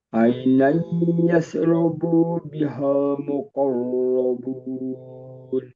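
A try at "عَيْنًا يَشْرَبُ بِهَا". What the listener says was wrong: Hati-hati, bunya tidak ada mat. Ainan yashrabu bihal. Langsung.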